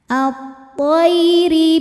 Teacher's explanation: dibunyikan secara tarqik karena harakatnya di bawah kasrah maka bacanya tipis